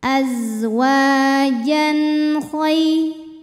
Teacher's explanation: Sebab ada tanwin fathah menghadapi huruf halqi atau huruf tenggorokan yaitu kha. Cara bacanya tanwin dibaca n, jelas. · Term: idhar halqi